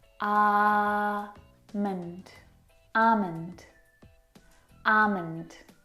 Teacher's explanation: Now, in this word, the L is silent. It's not almond or almond, it's almond.